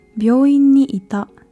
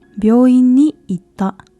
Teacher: the small つ which sounds like a glottal stop